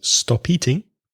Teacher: the two words connect because stop ends in a consonant and eating begins with a vowel